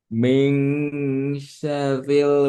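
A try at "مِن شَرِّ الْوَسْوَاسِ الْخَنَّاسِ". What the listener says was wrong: Syar, rohnya bertasydid. Min syarril. Kalau ada tasydid, rohnya jadi double. Syar, pertama syar, kedua ril. Syarril.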